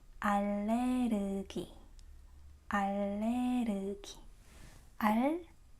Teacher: It's not very accurate because in Korean we don't have R sound. It's somewhere in between R and L. It's R, R. It's not Spanish R.